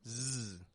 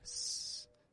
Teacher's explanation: Voiced sound. It flows out like an S, but there isn't only air coming out.